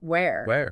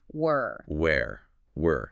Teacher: Where like the place has that air sound where. But were the past tense of be sounds more like were almost like the start of work.